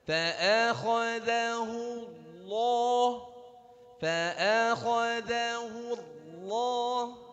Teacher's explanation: Jadi hanya hu yang monyong. Tapi ketika masuk ke alif lamnya di kata Allah itu harus turun.